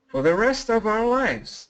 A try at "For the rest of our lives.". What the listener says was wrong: Yeah, great job. So you said our, which is perfect pronunciation.